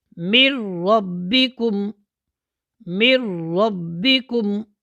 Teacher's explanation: نون ساکنہ نون تنوین کے بعد اگر لام اور را آ جائے، یہاں پر نون ساکن کے بعد کیا ہے، را آ رہی ہے، تو نون کو ہم نے را میں ملانا ہے۔ ایسا ملانا ہے کہ نون کی آواز بالکل ختم ہو جائے گی اور غنہ بھی نہیں ہوگا